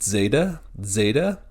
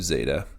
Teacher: Some people prefer to pronounce it with almost like a short D at the beginning